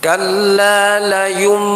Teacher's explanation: ada dua dengung di situ yang pertama dengungnya iqlab yang kedua dengungnya gunah Nun tasdid maka harus dibaca dengungnya Dua dengung itu sama panjangnya jadi para